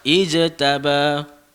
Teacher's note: Lantun sikit huruf jim dia sebut. Ijtaba qalqalah.